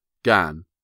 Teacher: She pronounced gang as gan, with only a suspicion of a nasal sound.